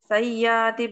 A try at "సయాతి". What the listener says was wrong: య కి యావత్తు లాగా వినిపిస్తుంది వింటున్నప్పుడు కానీ య కి యావత్తు లేదు